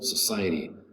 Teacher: The accent is over the second syllable